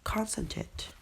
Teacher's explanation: we stress on the first syllable